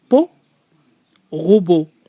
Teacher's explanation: There's a little W sound at the end in English that does not happen in French. It's just the pure O sound in French.